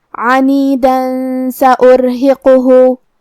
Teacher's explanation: کلمت عنیدہ میں حرف العین کی ادائیگی حلق کے درمیان والے حصے سے ہے. آخر میں حرف الدال پہ تنوین زبر ہے. · اگر ہم یہ آیت کو اگلی آیت کے ساتھ ملا کے پڑھے تو حرف السین کلمت سأرہقہ میں حروف الاخفاء میں سے ہے، اور اخفاء کا معنی ہے چھپا دینا، لہذا ہم یہ تنوین کو چھپاتے ہوئے لیکن غنہ کے ساتھ یہ حکم کو ادا کریں گے